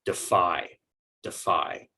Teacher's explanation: and the second is that this is a verb and so we're going to give more stress to that second syllable and it will keep the long i sound instead of switching to a long e